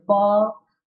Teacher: प्राणवायु होठों को स्पर्श करने के बाद बाहर आ रही है, इसलिए ये कौन से है, ओष्ठ्य है।